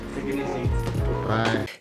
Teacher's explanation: Do you hear how the music or intonation falls after the final stressed syllable? · The ease syllable in easy is stretched out longer and used with emphasis, using a higher pitch. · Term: falling intonation pattern